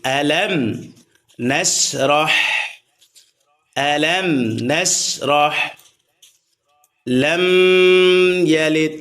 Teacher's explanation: এই মিম সাকিনকে গুণনা করা যাবে না, গুণনা ছাড়া স্পষ্ট করে পড়তে হবে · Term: মিম সাকিন ইজহার